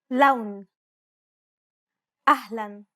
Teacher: unlike the English L the tongue is ever so slightly flatter and straighter in Arabic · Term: Arabic l sound, Arabic L sound